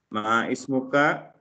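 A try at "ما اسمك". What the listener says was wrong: Dibacanya mas muka ya, jangan ma ismuka tapi mas muka langsung ya.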